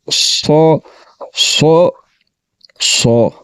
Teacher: زبان کی جڑ کو تالوں کی طرف بلند کرتے ہوئے اس کو پڑھیں گے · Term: صاد